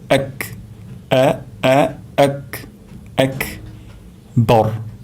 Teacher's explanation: আমাদের এখানে আকবর হয়ে যেতে পারে, অর্থাৎ হামজা এখানে পরিপূর্ণ উচ্চারণ না হওয়ার কারণে অন্য হরফের উচ্চারণ চলে আসতে পারে। তাহলে আমরা হামজা উচ্চারণ করব গলার শুরু থেকে, এবং হামজা এটি সিদ্ধা এর হরফ, তাই এটি শক্তভাবে উচ্চারণ করতে হবে